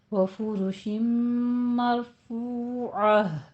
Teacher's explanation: وفرش مرفوعہ، فرو میں بھی را پر ہے، مر میں بھی را پر ہے، فا اور را دونوں کے اوپر ضمہ ہے، دونوں ہونٹ گول